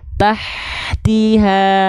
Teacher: berbisik nafasnya, tengah tenggorokan, ha kecil